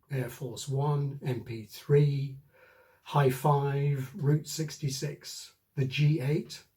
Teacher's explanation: Expressions like this that end in numbers generally have the main stress on that number